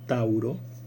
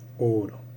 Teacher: ese diptongo se monoptonga, es decir, se transforma en una sola vocal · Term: monoptongación